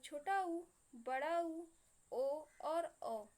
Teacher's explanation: पश्च स्वर, पश्च मतलब पिछला, ऐसे स्वर जिनके उच्चारण में हमारी जिह्वा का पिछला भाग क्रियाशील रहता है उसे हम लोग पश्च स्वर कहते हैं। मतलब ऐसे स्वर जिनको हम लोग अपने जिह्वा के पिछले भाग से उच्चारित करते हैं उसे हम लोग पश्च स्वर कहते हैं।